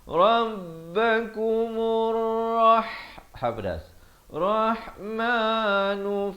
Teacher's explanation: ada lam syamsiah lamnya tidak dibunyikan